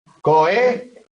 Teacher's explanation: el golpe de voz cae en la antepenúltima, luego es una palabra esdrújula